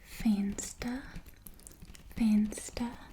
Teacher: the v sound is like an f in afrikaans um faint stir and with a slight roll on the arm